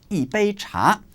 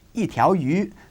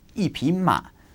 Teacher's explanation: And when you use number 1 with a measure word, it follows the same tone change rules as bu. Fourth tone if it is followed by a first, second, or third tone word, and second tone if it is followed by a fourth tone word.